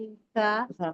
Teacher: ता का मखरज जो है जबान के ऊपर जबान की नोक ऊपर के जो टीथ होते हैं उसमें लगाएंगे · میم کو یا سے ملائیں گے، یا مدہ ہے تو تھوڑا 2 کاؤنٹ لانگیٹ کریں گے می، اور ہاں تا کا مخرج جو ہے زبان کے اوپر، زبان کی نوک اوپر کے جو ٹیتھ ہوتے ہیں اس میں لگائیں گے، تا نکالیں گے میم تا، ہاں اور تا کو بھی 2 کاؤنٹ لانگیٹ کریں گے کیونکہ الف مدہ ہے.